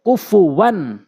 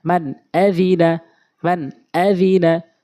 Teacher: মানে হামজা এসেছে তো আমরা এই নুন সাকিনকে এবং এই তানভীনকে আমরা স্পষ্ট করে পড়বো নাকের ভিতরে নেওয়া যাবে না গুন্নাহ করে পড়া যাবে না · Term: ইজহারে হাকিকি